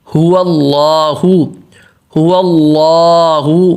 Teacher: آگے هو اللہ، هو اللہ، هو کا ہا بالکل واضح پیش، ہو واللہ، واو پہ پڑھتے ہوئے پتلا بولنا اور ہونٹ گول کرنے، اور واو کا جو زبر ہے اس کو واضح، هو اللہ، هو اللہ۔